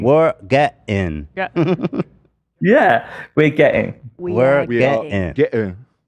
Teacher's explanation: So full break between the get and the ing.